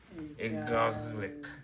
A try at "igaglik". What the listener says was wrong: No, igaglik. Too slow. You're saying it too slow.